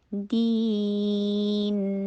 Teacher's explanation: دال کے نیچے کسرہ، پھر ای کی ساؤنڈ کیجیے